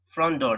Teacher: the T is missed out